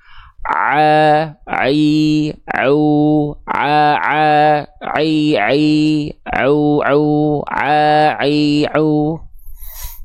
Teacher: Udah enggak ada suara ain yang masuk ke dalam rongga hidung lagi.